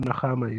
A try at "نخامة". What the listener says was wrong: Nukhama is phlegm or mucus. Nukhama with a dhamma on the noon.